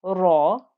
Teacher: make sure your ra is thick and heavy because of the fatha